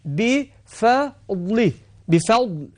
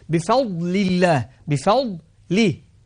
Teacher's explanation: بفضل فا مرققة والضاء مفخمة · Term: التفخيم